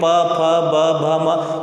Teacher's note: तो हमेशा ओठ के स्पर्श से ही इन वर्णों का उच्चारण होता है, इसीलिए इन्हें ओष्ठ वर्णाक्षर भी कहा जाता है।